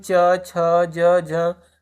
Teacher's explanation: तो तालव्य में च, छ, ज, झ इत्यादि शब्द आ गए।